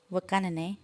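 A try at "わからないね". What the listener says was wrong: You cut it short. No, there was a where you said it, where it sounded like the waka waka waka.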